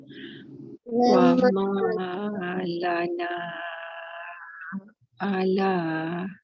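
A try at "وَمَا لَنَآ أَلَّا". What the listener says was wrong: Alla. Baca sabdu. Tak nampak tu sabdu pada lam tu. Okey, kena baca na 4 harakat. 2 tak boleh, 3 tak boleh. Jangan baca kurang ya. Jadi ombak tu ataupun kening tu membantu kita baca sebagai 4 harakat.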